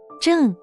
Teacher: This is the 4th tone, a sharp fall.